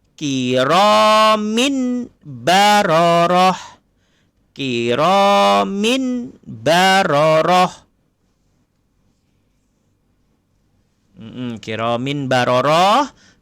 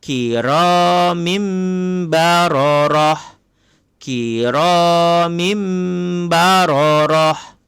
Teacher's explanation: Nampak ni tanwin bertemu dengan huruf ba. Tanwin bertemu dengan huruf ba, maka ditukar kepada bunyi mim.